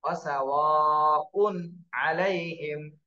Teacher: এই যে এখানে তানভিন আসছে, তানভিনের পরে ইজহারের হরফ আইন, এজন্য এই তানভিনে কিন্তু গুণনা করা যাবে না, স্পষ্ট করে পড়তে হবে। ওয়াসাওয়াউন আলাইহিম, ওয়াসাওয়াউন, এইভাবে যদি ধরে ফেলেন তাহলে কিন্তু গুণনা হয়ে যাবে, তাহলে ভুল হবে।